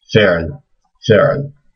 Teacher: So there's actually no vowel here in between the ayn and the lam.